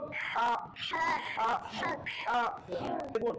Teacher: হা এটা প্রণালীকে চাপ দিয়ে উচ্চারণ করতে হয়